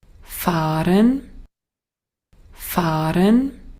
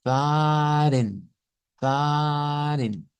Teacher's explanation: es un audio austriaco y notarán que la R que está utilizando es la R suave. Vea, es como decir ren, dice fahren, fahren.